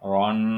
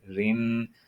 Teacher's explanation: را پہ زبر ہو یا دو زبر ہو ہمیشہ پر پڑھا جاتا ہے۔ پر سے مراد آواز کو موٹا کرنا۔